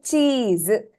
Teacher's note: So chi, the first chi is elongated.